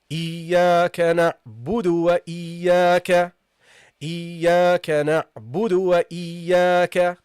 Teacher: The waw is not a heavy letter, guys. It's a light letter. So pronounce it lightly.